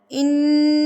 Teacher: जुबान का किनारा होता है ना ये ऊपर मसूड़ों से जाकर लगता है तब जाके नून अदा होता है इन्ना जब हम पढ़ेंगे तो जुबान ऊपर ताल के साथ चिपकी